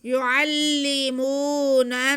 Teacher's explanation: تو یہ پہلا نون ہم دوسرے نون سے ملا کے یہاں پہ غنہ بھی کریں گے کیونکہ نون مشدد ہے